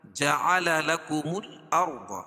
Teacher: اور ضاد کو بھی پر پڑھیں گے، کیوں کہ حروف مستعلیہ میں سے حروف مستعلیہ 7 ہیں، خا، صاد، ضاد، غین، طا، قاف اور ظا، اور یہاں ضاد ہے۔